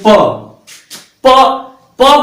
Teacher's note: प बोलने के लिए जब से दोनों होठ आपस में सटेंगे नहीं तब से आप प नहीं बोल सकते। यानी कि प बोलने के लिए आपको जो है दोनों होठों का सहारा लेना पड़ा, तो हमारा प जो है ओट्स व्यंजन हुआ।